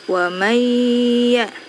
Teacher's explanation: Nah, bisa dilihat di sini nun sukun bertemu ya. Nunnya tidak dibaca tapi langsung dimasukkan ke huruf ya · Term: idgham bi gunnah